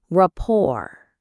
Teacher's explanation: This word comes from French, so the spelling is a little tricky. The T at the end is silent.